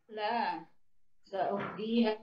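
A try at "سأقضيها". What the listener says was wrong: Sa'aqdiha, bukan sa'uqdi. Aqdiha.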